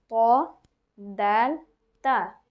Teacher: জিহ্বার আগা সামনের উপরে দুই দাঁতের গোড়ার সঙ্গে লাগিয়ে